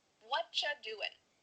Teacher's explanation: we've cut out completely the word are, and the word you just becomes cha.